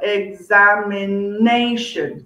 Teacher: five syllables okay and the stress is on the fourth syllable